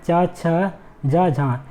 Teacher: कुछ ध्वनियों में जीभ पहले तो उच्चारण स्थान का स्पर्श करती है, फिर वहाँ से हटकर उच्चारण स्थान से इतना निकट रह जाती है कि वायु को घर्षण करते हुए ही बाहर निकलना पड़ता है। अर्थात इन ध्वनियों के उच्चारण में स्पर्श भी होता है और घर्षण भी होता है। · आप इसको बोल के देखिएगा तो इनका जो उच्चारण है स्पर्श भी करेगा और साथ ही साथ घर्षण भी करेगा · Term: स्पर्श संघर्षी, स्पर्श संघर्षी व्यंजन